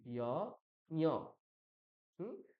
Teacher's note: ইয়কারের সঙ্গে আমরা নাক যোগ করে দিচ্ছি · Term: অনুনাসিক ইয়